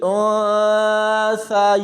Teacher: یہاں نون ساکن کے بعد سا ہے، تو یہاں پر اخفا ہوگا، یعنی نون کی آواز کو چھپا کر پڑھا جائے گا · بہت سارے لوگ یہاں پر یا کو یا کے ساتھ ملاتے ہوئے ایک بار یا پڑھتے ہیں، جبکہ یہاں پر ہم نے 2 بار یا پڑھنی ہے